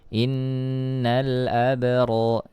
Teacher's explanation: Nah di sini ada alif lam qamariyah dibaca jelas, kemudian ada ba sukun ya maka dimunculkan sifat qalqalahnya